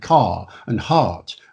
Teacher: RP is one of those rare accents where you don't pronounce the R after the vowel in words like car and heart